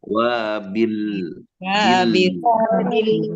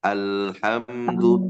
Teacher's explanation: ada huruf lam ketika disukunkan itu dialirkan sedikit